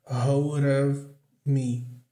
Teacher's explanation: Aqui é entre vogais, ou às vezes quando tem um L ou R antes também pode acontecer. Então o D vai ter um som de r